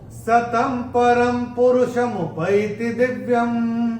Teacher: चौथे चरण में अगर हम देखेंगे, त के ऊपर अनुस्वार के बाद का अक्षर है प, और अनुस्वार के बाद जब प आएगा तो अनुस्वार का उच्चारण होगा म। और ये जो अनुस्वार है र के ऊपर, उसके बाद का अक्षर भी प है, तो इसका उच्चारण भी म ही होगा।